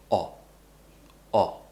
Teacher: So I'm making a round shape, and my tongue is pulled back towards the back of my mouth. And I'm just quickly pushing the sound out.